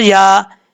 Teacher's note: या के ऊपर खड़ा ज़बर है, एक अलिफ की मिकदार लंबा करेंगे